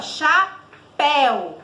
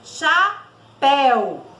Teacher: o som do E aí sai um som aberto. Então, até a minha boca mesmo eu abro, ó, mais, né?